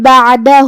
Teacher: کلمت بعدہ میں یہاں عین ساکن ہے، لہذا ہمیں عین کو ظاہر کرنا ہے